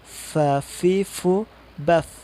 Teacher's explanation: Ada asyafatain yang pertama itu berkaitan dengan gigi seri atas ketemu bibir bawah, yaitu ada huruf fa.